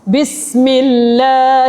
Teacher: lam dimulakan dengan syaddah fathah tapi dibaca dengan nipis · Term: lafzul jalalah